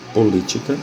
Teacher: A sílaba tônica é a antepenúltima, portanto, é a palavra proparoxítona.